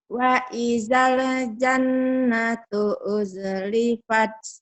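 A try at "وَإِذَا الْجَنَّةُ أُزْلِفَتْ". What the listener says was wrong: Nah, wa idalnya kok ada e-nya di situ. Wa idal. Putusin aja, putus. Wa idal. Wa idal jannatu uzlifat. Wa idal jannatu uzlifat. Lepas aja. Wa idal.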